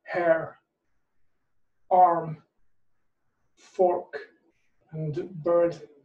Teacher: So for example, if you have an American accent or a Scottish accent or an Irish accent, then you pronounce that R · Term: optional R